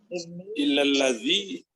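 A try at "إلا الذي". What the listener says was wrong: Ya, betul.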